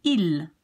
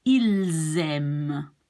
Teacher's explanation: And this would be aime. But since this starts with a vowel, you will be linking the S to the A. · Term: link words together